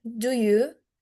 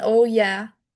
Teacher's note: It's skepticism. You start low and go up, as in, do you? And it carries a subtext of disbelief, as in, oh yeah. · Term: Low rise intonation